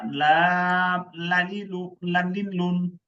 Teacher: জিহ্বার আগার কিনারা সামনের উপরে দাঁতের মাড়ির সঙ্গে লাগাইয়া